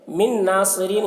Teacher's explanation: من ناصرین، یہاں پر نون ساکن کے بعد حروف یومن میں سے نون ہے، تو نون کو نون سے ملا کر غنہ کے ساتھ پڑھیں گے، اس کو ادغام ناقص کہتے ہیں.